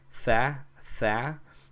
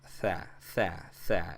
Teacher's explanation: It's a soft, almost breathy sound.